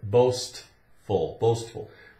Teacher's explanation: it's got the S-T where you can hear the T in it. So it's S-T, boastful, boastful.